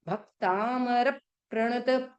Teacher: देखो हमने आपको रियम बताया ना कि आधा क आया तो भ पे प्रेशर दो